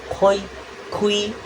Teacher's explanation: pangkal lidahmu diangkat mendekati anak tekak ufula, yaitu bandul kecil yang menggantung di tenggorokan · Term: bunyi dorso uvular